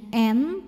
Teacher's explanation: ada dengung ada bunyi yang masuk hidung bunyinya n tahan sampai ada getaran halus ke hidung